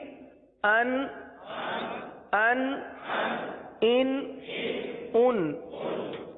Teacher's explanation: نہیں ہوگا، کیونکہ یہ صرف نون ساکن ہے. تو نون ساکن کی جتنی آواز نکلتی ہے اتنی آواز ناک میں جائے گی اور نون ساکن کی آواز نکلے گی، گنہ نہیں ہوگا